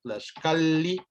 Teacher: las dobles L's se leen como una L larga